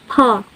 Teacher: voiceless bilabial plosive